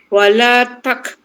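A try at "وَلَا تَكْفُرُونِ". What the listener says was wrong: Jangan ni sangat kap tu. Terlalu apa? Tebal. Takfurun.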